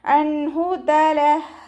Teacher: നൂൻ സാക്കിനയ്ക്ക് ശേഷം ഇദ്ഹാറിൻ്റെ അക്ഷരമായിട്ടുള്ള ഹ വന്നു. നൂൻ സാക്കിനയെ വ്യക്തമാക്കി ഉച്ചരിക്കുക. മണിക്കാതെ വ്യക്തമാക്കി ഉച്ചരിച്ചു കൊടുക്കുക. അൻഹു തലഹ ലൈറ്റാക്കിയിട്ട് ഉച്ചരിക്കുക.